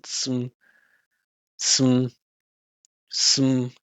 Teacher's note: We made it a reduction. We removed the vowel. We focused on the vibration.